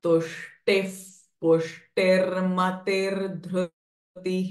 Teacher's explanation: Now here tushtihi, retroflex sh followed by visarga, but visarga is getting followed by pushtihi pa. So visarga sound will change from h to f.